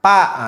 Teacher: Nah, orang Sunda itu kenapa sering salah? Karena mereka membaca huruf fa dengan makhraj huruf ba. Akhirnya harusnya fa dibaca pa.